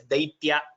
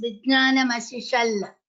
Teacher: in Malayalam, the dialect is such that Takara has been replaced by Lakara.